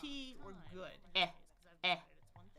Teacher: My tongue is forward, my jaw is pretty open there.